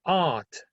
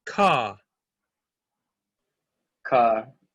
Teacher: But in British English, it's not rhotic.